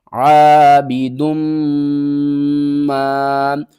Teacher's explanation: ہے، اور دال کو ہم نے میم کے ساتھ ملانا ہے، میم مشدد ہے تو یہاں پر ہم غنہ کریں گے، اور دال کو میم کے ساتھ ملا کر پڑھیں گے ، یہاں ہو رہا ہے ادغام، عابدم ما، عین زبر ع،